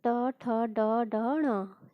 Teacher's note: ये मूर्धा से बोले जाते हैं। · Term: टवर्ग